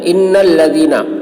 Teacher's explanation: نون مشدد ہے، نون میں غنہ ہوگا